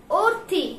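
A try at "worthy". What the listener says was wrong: অর্থি, ঠিক আছে? কিন্তু অর্ধি বলি, অর্থি বলি না, অর্ধি আসে উচ্চারণটা।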